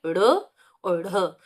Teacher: ये दोनों मूर्धा से निकलते हैं, क्योंकि आपकी जो जीभ है वो पलट के ऊपर मूर्धा में लग रही है, तो ये मूर्धन्य व्यंजन हो गए।